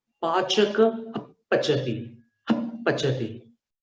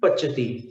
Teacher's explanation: अंदर से वायु का दबाव आएगा और दोनों होठ एकदम बंद होंगे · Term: उपध्मानीय